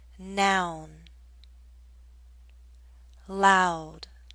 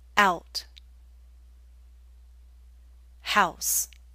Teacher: This time we're moving from around here to here. So our lips are moving in to a circle. Not a tight one as in ooh, but approaching that.